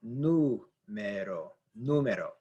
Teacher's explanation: The stress is on actually the NU. This syllable right here is the stressed syllable, which is the third from last syllable.